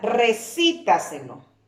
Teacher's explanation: Antepenúltima. ¿Dónde recae la fuerza de la voz? En la sílaba que está antes de la antepenúltima sílaba.